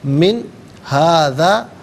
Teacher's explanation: نون ساکن کے بعد ہا حرف حلقی آ رہا ہے تو یہاں نون ساکن کو اظہار کے ساتھ پڑھیں گے، غنہ یا اخفا نہیں کیا جائے گا